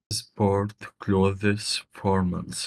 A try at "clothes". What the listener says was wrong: Okay, so that word close, you never pronounce the th. It's just like close the door.